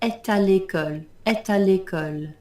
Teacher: You can liaise between the T at the end of E and the A of à l'école.